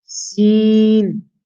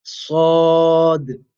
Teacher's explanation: What makes Sad different from Sin, even though they are both pronounced, articulated from the exact same makhraj, what makes them different is the sifat. Sin is a istifa letter. It's a letter in which you keep the tongue flat. You do not raise the tongue as an empty mouth sound. Whereas Sad, for the letter Sad, you will raise your tongue. And this gives it a heavy sound, a full mouth sound.